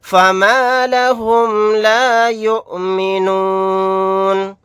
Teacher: حمزہ ساکنہ پر جھٹکا لگا کر پڑھیں گے